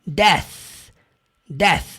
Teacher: A pronúncia ali da língua entre o dente. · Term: pronúncia do TH